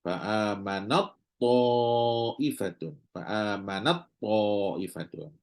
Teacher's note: ta dengan ta ta mati dulu faamanat dengan thaifatun faamanat thaifatun maka apabila dibaca secara sambung apa yang berlaku ta masuk dalam ta